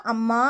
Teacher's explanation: அப்படின்னா ஒரு சொல்லுடைய இனிய ஓசைக்காக அந்த ஓசை குறைந்திருக்கும் பொழுது நம்ம நெடில் எழுத்துக்கள் உபயோகித்து அதை வந்து நீண்டு ஒளிக்க செய்து கூப்பிடும்போது அதை வந்து நம்ம உயிரளபடைன்னு சொல்லுவோம் அப்படின்னா தனக்குரிய இரண்டு மாத்திரையிலிருந்து நீண்டு மூன்று மாத்திரையாக ஒளிக்கும்